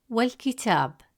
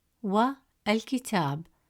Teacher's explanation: When you add waw before al-kitab, the alif hamza sound is skipped. Instead of saying wa al-kitab, the sound flows smoothly from wa to kitab. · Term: Hamzat al-Wasl